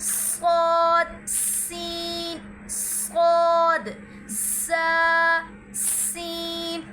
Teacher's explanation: जुबान की नोक और दोनों दांतों के अंदरूनी किनारे से अदा होता है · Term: हरफे सफीर